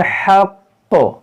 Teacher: یہاں پر زا ہے، یہاں پر جب رکیں گے تو اس کو پڑھیں گے حق. یہ تشدید کو باقی رکھیں گے، 2 بار پڑھیں گے